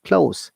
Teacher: when you use as a verb, S of the close sounds like Z